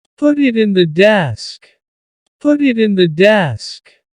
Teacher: Do you see how that makes it much faster? Because instead of spending the time to let the air come out of your mouth, your tongue is just tapping the top of your mouth to make a D.